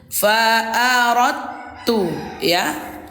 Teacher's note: Disatukan bunda suaranya, tapi huruf dalnya tidak dibaca qalqalah ya. Jangan bapak ibu bacanya fa'aradtu lah ya, tak boleh kayak gitu. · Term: idgham mutajanisain